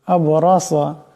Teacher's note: এখানে রা এবং সা দুইটাকে মোটা করিয়া পড়তে হবে